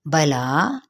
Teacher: کھڑا زبر بھی ہے اور مد بھی ہے، تو 4 حرکات کے برابر لمبا کھینچیں گے